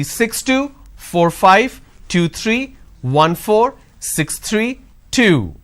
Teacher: My volume went up, but my tone, my intonation is flat.